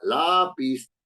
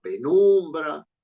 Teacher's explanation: Todas son graves porque su sílaba penúltima es su sílaba tónica, es la sílaba predominante y en consecuencia la que lleva el mayor golpe de voz, y entonces esas palabras se constituyen como graves o llanas.